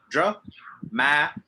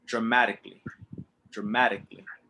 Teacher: the ma is slow and strong so draw ma okay dramatically dramatically and any time you see